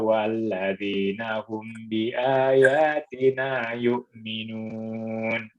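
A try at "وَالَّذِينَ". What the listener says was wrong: Wallazina, nggak boleh lama-lama di wallazina.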